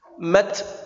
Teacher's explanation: Ketika ujung lidah menempel pada gigi atas, dilepas maka keluar hamesnya. Mat bukan mats itu ada sinnya.